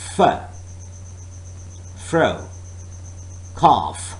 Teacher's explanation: Air is forced to the upper teeth and lower lip. Of course, the class is like labiodental.